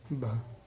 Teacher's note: हिंदी की स्पर्श घोष महाप्राण ओष्ठीय व्यंजन ध्वनि है